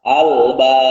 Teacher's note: karena huruf ba itu termasuk pada salah satu huruf qalqalah, maka ini menjadi qalqalah kubra. Maka terbaca u-nya secara jelas.